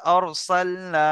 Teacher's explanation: র সাকিনের পূর্বে জবার আছে তাহলে র পুর হবে